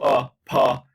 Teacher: when your lips are coming together for the p sound, your lips are touching, the vocal folds have not started anything. They are wide open in breathing mode. · And you say, once you open for the p, and then you switch as you transition from to pa, then the vocal folds now are closed. We call this long lag, like the vocal folds close after you explode the lips for the sound p.